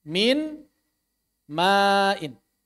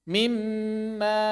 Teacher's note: Maka di sini kita tidak lagi membaca huruf nun. Langsung membaca mim. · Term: idgham kamil